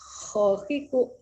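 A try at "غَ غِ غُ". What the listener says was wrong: Go. Go bukan ko, salah. Gofur, bukan kopur.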